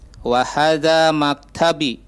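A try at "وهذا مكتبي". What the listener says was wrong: Nah, maktabi agak panjang B-nya.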